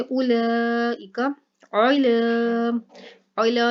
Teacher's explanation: आइन जो है ये मोटा करके और इसके अलावा हाइलक से निकाल के पढ़ा जाएगा, और यहाँ पर लाम जो है इसको लंबा करके पढ़ा जाएगा क्योंकि इसके ऊपर खड़ा ज़बर आ गया।